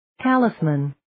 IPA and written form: 'tælɪsmən (Talisman)